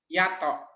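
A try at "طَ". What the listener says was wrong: Ini bukan to, tapi sod titik. Kalau to yang ini. To yang ini nih. Ini do, ya do. Waladolin do.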